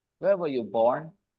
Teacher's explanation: I stress the word born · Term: extra stress